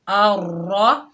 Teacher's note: را کے اوپر تشدید آئے گی تو اس سے موٹا پڑھیں گے